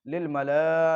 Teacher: لام کے اوپر کھڑا زبر الف مدہ کہ اس کا حمزہ اسی کلمے میں ہے، لہذا مد متصل ہوگا تو اس کو زیادہ کھینچتے ہوئے پڑھیں گے